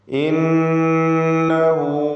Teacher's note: ഇന്നഹു, ഇതിൽ നൂൻ മുഷദ്ദദ, ഷദ് നൽകപ്പെട്ട നൂനിനെ 2 ഹറക്കത്തിൻ്റെ അളവിൽ മണിക്കണം. ദ്വമീറിന് മദ്ദുസ്സിലത്തി സുഗ്റ നൽകി ദീർഘം നൽകുക, 2 ഹറക്കത്തിൻ്റെ അളവിൽ മാത്രം